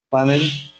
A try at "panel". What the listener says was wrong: Es aguda. Entonces no es panel, sino panel. Si fuera panel llevaría tilde. Es panel.